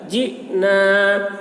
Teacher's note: حمزہ ساکن ہے یہاں پر جھٹکا لگے گا